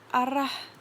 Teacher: Lalu ada fonem R, cara artikulasinya getar atau trill. Tempat artikulasinya di alveolar atau punggung gigi.